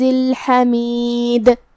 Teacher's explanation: کلمت الحمید میں یہاں حرف الحا ہے. ہا کو ہم حلق کے درمیان والے حصے سے ادا کریں گے